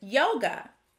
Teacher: yoga has the schwa sound at the end of the word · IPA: /ə/